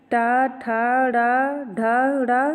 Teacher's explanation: मूर्धन्य तालु के मूर्धा भाग से